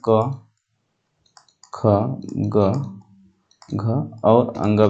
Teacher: पूरे पूरे क वर्ग का उच्चारण स्थान कंठ होता है। तो क वर्ग में क, ख, ग, घ और अंग भी शामिल है, यानी अंग का उच्चारण स्थान कंठ भी होता है।